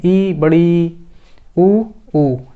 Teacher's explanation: सबसे कम मुख खुलता है ई, बड़ी ई और ऊ और बड़ा ऊ बोलने में।